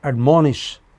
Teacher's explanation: Another three-syllable verb, admonish it is on the pre-final.